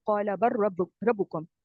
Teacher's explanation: بل کر کے نہیں پڑھیں گے، لام کو رو میں کمپلیٹ مرج کر دیں گے۔ یہ وہ ایگزامپل ہے کہ ریلیٹیوز ہوتے ہیں ایک دوسرے سے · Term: کمپلیٹ ادغام